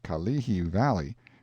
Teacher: pronounced stress on the second syllable